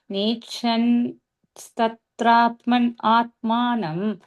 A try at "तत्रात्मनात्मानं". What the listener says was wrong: And the second line, first part is like as much as possible. Tatratmanatmanam as one word.